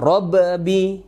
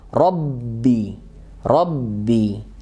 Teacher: Ya walaupun dia sukun kalau di rinci ada sukun cuman kan langsung idgham ke huruf keduanya jadi hanya ada penekanan ke b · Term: tasydid